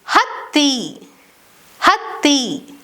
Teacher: While the written form of the second consonant differs from the first, the pronunciation remains strong and germinated, that is doubled. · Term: double th sound